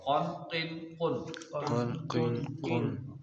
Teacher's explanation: दो नुतो वाला काफ जिसको मोटा पढ़ेंगे और जुबान की जड़ और तालू के नरम हिस्से टच होंगे आपस में यहां से अदा होगा कन किन कुन कुन पहला वाला काफ